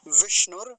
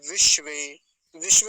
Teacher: एक बार तो मूर्धन्य सकार आया है और एक बार तालव्य सकार और दोनों आधे हैं